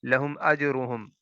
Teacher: جیم پر قلقلہ ہوگا، اور را کو پر کر کے پڑھیں گے کیونکہ اس کے اوپر پیش ہے